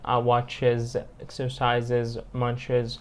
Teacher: عرفناه بال IZ لما بتنتهي ب CH أو S أو Z